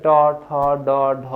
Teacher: ট, ঠ, ড, ঢ এগুলো উচ্চারণ করতে দেখা যাচ্ছে যে জিভ ওই যে মূর্ধায় যে টুকা দিচ্ছে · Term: মূর্ধন্য ব্যঞ্জন